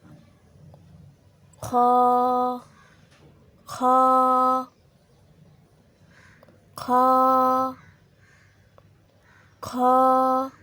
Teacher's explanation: खा हलक के शुरू हिस्से से अदा होता है